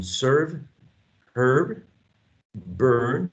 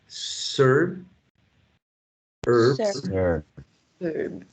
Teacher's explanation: So we got this long sound, central, mid-central sound